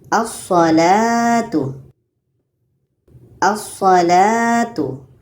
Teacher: Jadi lamnya tidak kita baca terus masuk kepada huruf yang bersyaddah. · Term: alif lam